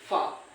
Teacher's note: तो गर्म हवा निकलती है रगड़ खा के निकलती है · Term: संघर्षी व्यंजन